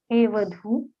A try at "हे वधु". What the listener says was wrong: यहाँ पर वधु में दीर्घ नहीं है। हे वधु में, हे वधु दीर्घ नहीं है वहाँ।